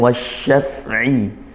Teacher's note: Al bertemu huruf syamsiyah, ya, lam ta'rif bertemu huruf shin, huruf syamsiyah. Kita baca langsung idgham, masuk ke huruf shinnya sehingga ditasydid seperti itu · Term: idgham syamsiyah